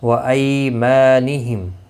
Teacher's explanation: یالین ہے، تھوڑا نرمی کے ساتھ کھینچ کر ادا کریں گے. ما الف مدہ ہے، ایک الف کی مقدار کے برابر کھینچ کر پڑھیں گے.